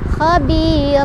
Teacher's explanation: berubah jadi fathah dan panjang 2 harokat